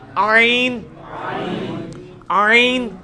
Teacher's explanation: ہا کا مخرج جو ہے نا یعنی وسط حلق، ادھر ہی سے یہ آئین بھی نکلنا ہے